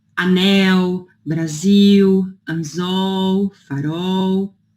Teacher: o som do L depois de vogal se torna um U não tão forte